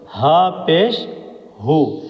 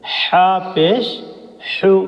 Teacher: ہا بالکل سمپل، ہا منہ کھول کر، ہا پیش ہو، اور یہ ہے حا بیچ حلق سے